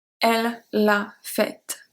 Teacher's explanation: We don't pronounce the E, we do pronounce the T.